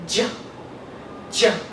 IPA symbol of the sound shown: dʒ